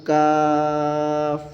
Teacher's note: کاف باریک پڑھنا ہے اور کھینچ کر پڑھنا ہے، کیف پڑھنا غلط ہے، کاف۔